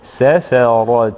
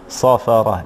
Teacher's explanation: فالسين هنا حرف من الحروف المستفلة المرققة، صحيح أنها مفتوحة والفتح قد يساعد على التفخيم، ولكن لا ينبغي أن تصير بأي حال إلى صاد وتقول صافرة، لا، هذا سيتغير معنى الكلمة.